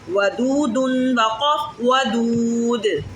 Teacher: دال کو ہلا کے پڑھیں کیونکہ حروف کلکلہ میں سے ہے, اس لیے ہم دال کو ہلائیں گے.